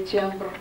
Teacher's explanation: я смягчаю «т» в слове «тембр». Ну, кстати сказать, это норма.